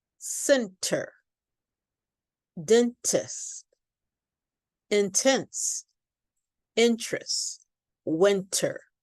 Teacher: when we say this T, there's a flow of air that comes out. It's aspirated, which means a little bit of air comes out. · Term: popped T